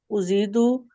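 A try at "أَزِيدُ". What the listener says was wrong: अजीदु को भी आपने कुछ उजीदु पता नहीं क्या बोला था, अजीदु है लफ्ज। हमजा पे अलिफ जबर आती है।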